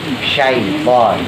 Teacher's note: Jadi kalau shin itu ujung lidahnya ditaruh di atas di langit-langit yang keras.